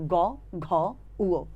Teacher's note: গ, ঘ, উ এগুলো বলতে গেলে একটু ধাক্কা লাগে এবং একটু বেশি কাপে কন্ঠটা। কন্ঠটা বেশি কাপলে ঘোষ আর কন্ঠটা কম কাপলে অঘোষ।